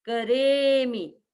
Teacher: फिर करेमी, मी छोटा है, मी छोटा है इसलिए मी की ह्रस्व मात्रा होने के कारण हम इसको करेमी, मी को थोड़ा सा बोल करके छोड़ देते हैं, करेमी। फिर वंदामी, वंदामी, वंदामी।